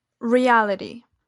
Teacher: The alveolar plosive is articulated as a flap, one tapping of the tongue against the alveolar ridge, as it appears in the intervocalic position. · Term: flapping or tapping